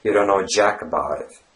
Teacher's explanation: the biggest stress is put on the word jack